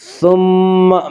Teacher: ثم میم مشدد غنہ ہوگا، غنہ کی مقدار 1 الف ہے